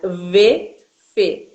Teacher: o V e o F, eles são dois sons que são lábio-dentais